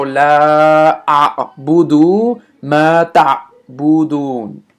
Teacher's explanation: It's kind of like you're interrupting the a vowel. So I have the a vowel here, and then this apostrophe will interrupt it.